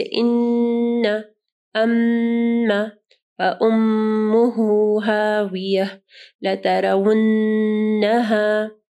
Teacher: نون اور میم کے اوپر جو ہے شد ہے تو آپ کو جو ہے وہاں پہ غنہ کرنا ہے، یعنی اس کو تھوڑی 1-2 سیکنڈ کا اس کو ٹائم دینا ہے